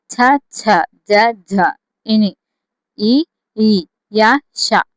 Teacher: తాళవ్యాలు అంటే ఏంటి? దవడల నుండి పుట్టేవి తాళవ్యాలు